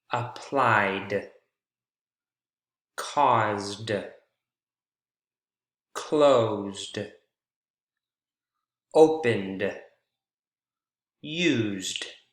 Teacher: all of them ending with voiced consonant sounds right before the ed ending and that's why they all fall under that d category let's